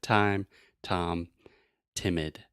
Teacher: the very front part of your tongue is touching the top of your mouth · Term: true T